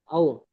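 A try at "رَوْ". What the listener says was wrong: আও নয়, রও। রও। র আর আওয়াজ আনতে হবে প্রথম, ফার্স্ট।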